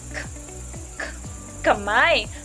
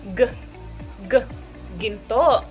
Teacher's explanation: Ang likod ng dila ay dumidikit sa malambot na ngalangala. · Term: velar